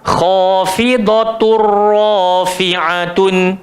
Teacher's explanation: memasukkan tanwin ke dalam ro tapi tak ada dengung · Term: idgham Bila Ghunnah